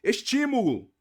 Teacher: não é a última não é a penúltima é a anti penúltima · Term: proparoxítona